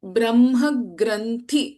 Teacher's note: It is not thi. Thi should not be extended here. It is a hrasva, short vowel.